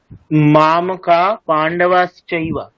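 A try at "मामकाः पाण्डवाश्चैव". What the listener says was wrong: হ্যাঁ ওটা উচ্চারণ করুন মামকাফ, মানে একটা অর্ধেক অর্ধেক ফকার। মামকা পাণ্ডবাশ্চৈব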